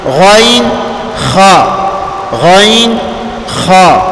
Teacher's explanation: مخرج نمبر 4 ہے ادنیٰ حلق، گلے کا جو منہ کی طرف حصہ ہے وہ والا، اس سے غین اور خا ادا ہوتے ہیں۔